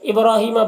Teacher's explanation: با میں قلقلہ ہوگا، را کو پر پڑھیں گے، کھڑا زبر ہے، ایک الف کے برابر کھینچیں گے۔ ہی میں یا مدہ ہے، ایک الف کے برابر کھینچیں گے۔